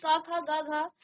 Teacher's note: क ख ग घ कंठ कहलाते हैं, क्योंकि इसका उच्चारण स्थान कंठ से होता है, तो इसलिए ये आपके कंठ कहलाते हैं।